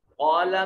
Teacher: قاف جو ہے موٹا اور پر کر کے پڑھا جائے گا